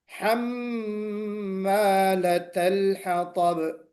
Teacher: میم مشدد ہے، غنہ واجبہ ہے. غنہ واجبہ یعنی غنہ کرنا ضروری ہے